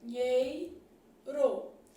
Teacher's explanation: Bom, em se tratando de encontros vocálicos, as palavras do texto dinheiro, aqui a gente já sabe que tem um dígrafo, fazer um Nzinho assim, dinheiro. O E é vogal e o I é semivogal. Isso daqui é um ditongo.